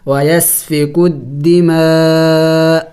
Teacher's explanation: آخر میں حمزے کی آواز تھوڑی سی نکلنی چاہیے